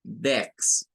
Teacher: Esta palabra es sencilla porque la pronunciación es nada más con una E, o sea, suena como una E del español